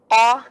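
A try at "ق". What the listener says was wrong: Nah, tebal apa tipis? Nah, tebalkan.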